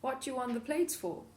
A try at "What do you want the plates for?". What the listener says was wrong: Okay, TH dropping. London accent, but common feature of a lot of casual speech in many regions.